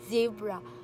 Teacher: naramdaman niyo po ang vibration sa inyong lalamunan habang sinasalita po ninyo ang mga sounds na ito